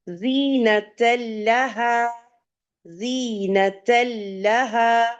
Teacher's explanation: لہا کے لام پہ تشدید ہے، مضبوطی اور جماؤ کے ساتھ آپ جائیں گی. جس لیٹر کے اوپر تشدید یا شد ہوتا ہے ہمیشہ اس کو اسٹریس دے کے پڑھا جاتا ہے.